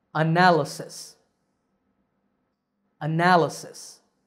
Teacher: here we see four syllables and the stress is on the second syllable